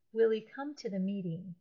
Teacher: In running speech, when an unimportant word that begins with an H sound, such as he or his, her, or have, when these words are followed or follow a word that ends in a consonant, like will, that's the L in will, the H sound is actually eliminated, and the final consonant of the first word is linked to that H word